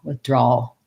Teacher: The back of my tongue stays down and the tip lifts for the L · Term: dark L